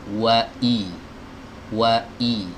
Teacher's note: Huruf hamzah keluar dari tenggorokan bagian bawah, tepatnya di pita suara